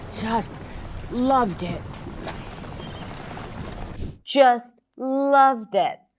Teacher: So the word loved is longer, has more volume, and higher in pitch.